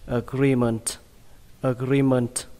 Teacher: cái âm I này các bạn hơi kéo dài ra một chút nhé